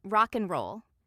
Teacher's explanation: And and can reduce to n, as in rock and roll. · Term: reductions